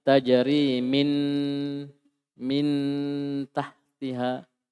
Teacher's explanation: Dia baca idhar. Jelas nun sukunnya atau tanwinnya.